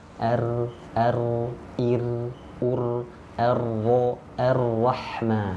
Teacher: Lalu takrir, ujung lidah bergetar, hanya dimiliki satu huruf saja, huruf ro.